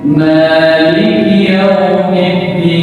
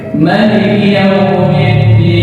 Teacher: sebagian ulama qiraah membaca maliki dengan memanjangkan huruf mim